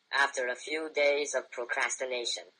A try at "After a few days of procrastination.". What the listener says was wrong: Okay, that was good.